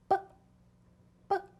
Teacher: We don't want that uh sound at the end. It's very short. It's a clip. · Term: B sound